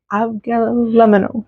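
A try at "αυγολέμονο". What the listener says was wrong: And technically the G is silent. So it's Avgolemono.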